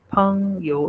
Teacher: There is a puff sound after p. So it makes it po.